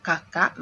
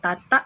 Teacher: Bunyi K belakang berubah menjadi T, depan. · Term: fronting